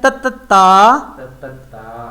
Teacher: Touch ہو رہی ہے اوپر والے دو دانتوں کی جڑ میں. اور جڑ کو کہتے ہیں انگلش میں ایج.